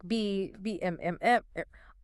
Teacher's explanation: These are the sounds that do make your vocal cords vibrate. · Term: voiced sounds